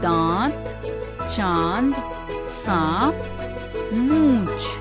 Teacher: इसका उच्चारण नाक और मुंह से किया जाता है। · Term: चंद्र बिंदु